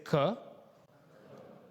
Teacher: If you made the sound with me, notice that it starts from the back of your throat.